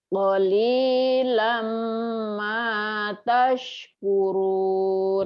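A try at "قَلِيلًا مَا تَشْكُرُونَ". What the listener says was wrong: Tuh, Ibu masih jangan jangan ditahan. Lama, ditahannya digunda sama diman. Lama tashkurun. Cepetin sedikit.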